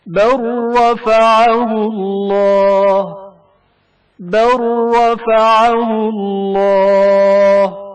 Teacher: لام ساکن کا رائے متحرک میں ادغام